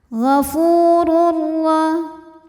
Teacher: Lalu ada hukum idgham bila gunnah karena ada tanwin dhammah yang menghadapi huruf ra, maka tanwin dimasukkan ke ra, tidak disertai dengung. Ghafurur cukup ditekan, masuk dengan sempurna tanwinnya ke ra ya.